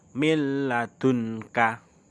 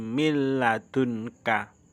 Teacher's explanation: Coba diperhatikan, itu nun mati bertemu dengan huruf lam. Tulisannya min ladunka, tapi bacanya karena ini idgham bila gunnah dimasukkan tanpa mendengung. Mil ladunka, bukan min tapi mil ladunka.